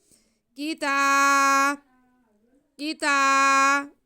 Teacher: جاءہم، وَلَمَّا جَاءَهُمْ کتاب، کاف کے نیچے زیر، تا پہ کھڑا زبر، تا کو ہم ایک الف کے برابر کھینچ لیں گے۔